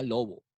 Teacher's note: la P se vuelve sonora cuando está entre vocales